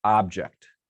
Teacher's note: the first syllable sounds a little louder to me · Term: stressed